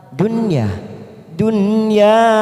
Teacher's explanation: nun sukun yang bertemu ya warna merah kita baca jelas tanpa mendengung namanya bacaan idhar wajib atau Idhar mutlak Dunya Dunya ynya dua